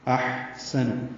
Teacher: احسن ہا ساکن پہ ہمس ہے